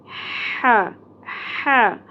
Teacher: حلوہ کی طرح نہیں پڑھنا ہے ٹھیک ہے حلق میں سے وسط حلق میں سے اس طرح ادا کرنا ہے just like a sound of breathing